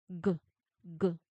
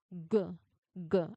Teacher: You put your tongue all the way to the back and press it against the soft palate or soft part of the roof of your mouth at the also at the back. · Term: voiced sound